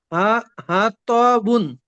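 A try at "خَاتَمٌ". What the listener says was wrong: মাশাআল্লাহ, খুব সুন্দর।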